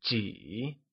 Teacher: which is said using a falling, rising tone